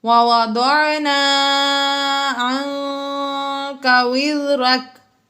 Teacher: عَنْكَ میں غنہ اس لیے کیا کہ نون ساکن کے بعد کاف آ گیا حروف اخفا میں سے، اس لیے یہاں پر اخفا ہوا یعنی غنہ ہوا۔